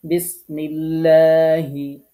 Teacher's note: দুই নম্বর নিয়ম আল্লাহ শব্দের লাম কখন চিকন করে পড়তে হবে আল্লাহ শব্দের লামের পূর্বে জের হলে তখন লাম অক্ষরটি বারিক মানে পাতলা মানে চিকন করে পড়তে হয়